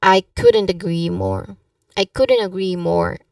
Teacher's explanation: the stress here should be on agree more to highlight the intensity of your agreement